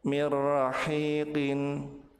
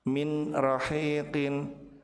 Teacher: maka nun dilebur ke huruf ro tanpa ditahan dan tanpa disertai dengan ghunah.